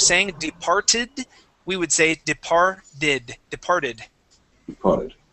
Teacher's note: when you have ed endings, okay, your ed is great, okay, but a tip for you: when it ends with a t, that t then turns into a d sound.